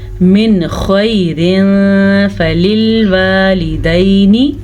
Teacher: ख़ौ हमेशा ही पुर पढ़ी जाती है क्योंकि ख़ौ हरूफ़ मुसालिया में शामिल है।